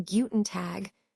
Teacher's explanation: the final G, as in guten tag sounds more like a soft K